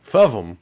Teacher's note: I'm keeping everything the same as in the real word, voicing, frication, nasalization, but the coronal switch, the switch that says, Use the tip of the tongue for s and n, s and n, is jammed.